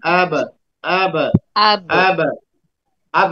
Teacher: तो जैसे ही मिले अब खोल देंगे तो कलकला आवाज ही आ जाएगी